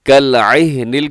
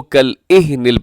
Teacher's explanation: کَالْعِهْنِ کو کَالْإِهْنِ پڑھ دیتے ہیں، عین کی جگہ پہ حمزہ، یہ درست نہیں ہے